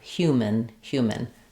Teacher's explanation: Um so rather than human we have human human clear vowel in the first syllable reduced vowel in the second syllable